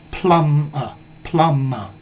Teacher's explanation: Notice the B in plumber is silent.